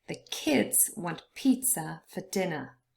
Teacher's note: pizza and dinner both consist of two syllables but only the first one is stressed